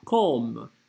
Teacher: Опять же, не «come», а «comme». «О» открытая здесь. «Comme». Она на «а» похожа, но на «а» не является вовсе. Поэтому не «come», а «comme».